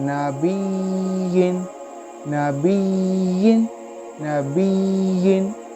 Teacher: यहाँ जब भी या मुशद्दद होगा तो यहाँ नबरा होगा। या मुशद्दद और वाव मुशद्दद को हम कुछ हाईलाइट करके पढ़ेंगे, इसी को हम नबरा कहते हैं।